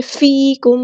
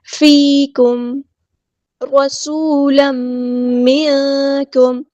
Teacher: فیکم رسولا منکم، فیکم یا مد آئی ہے تو مد اصلی ہوگی، ایک الف کے برابر لمبا کریں گے۔ میم ساکن پر ٹائم نہیں دینا، یہاں پہ اظہار شفوی ہو رہا ہے۔ ٹائم نہیں دینا مطلب ایسے کہ فیکم، ایسے نہیں رکنا، سمپل پڑھنا ہے۔